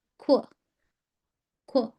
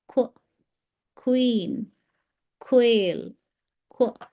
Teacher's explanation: the sound of Q is qu, qu, a slight round of your mouth